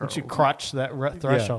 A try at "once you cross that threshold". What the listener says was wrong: Yeah, you got real shushy.